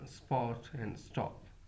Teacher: Aspiration does not occur when sa precedes in the same syllable.